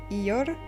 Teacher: Le R roulé, difficile à maîtriser, la langue est roulée, son extrémité vibre